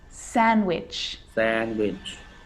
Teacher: I'm not pronouncing the D in sandwich. I'm just pronouncing the consonant N sound before it.